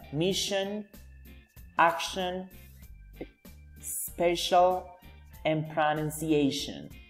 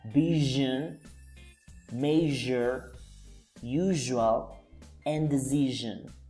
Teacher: one is voiceless because it does not vibrate, and the other one it's voiced because it vibrates